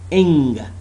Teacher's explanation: it's voiced velar nasal sound